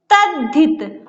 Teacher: समझ में आई बात? कि यदि ता के बाद हा हो तो ता का दा और हा का धा हो जाता है